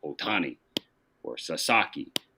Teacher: in English there's you know extra emphasis on the second syllable